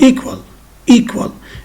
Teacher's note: The second syllable is weak. Why? Because it contains schwa. And we knew that all syllables that contain schwa are weak syllables.